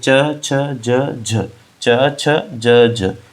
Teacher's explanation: जो जिभ्या होती है वो ऊपर उठकर तालू को स्पर्श करती है तथा हवा मुख विवर से बाहर निकलने में संघर्ष का सामना करना पड़ता है। यानी कि स्पर्श भी करती है। · च ज का उच्चारण करते समय जिभ्या ऊपर उठकर तालू को स्पर्श करती है। जो जिभ्या होती है वो ऊपर उठकर तालू को स्पर्श करती है तथा हवा मुख विवर से बाहर निकलने में संघर्ष का सामना करना पड़ता है। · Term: स्पर्श संघर्षी व्यंजन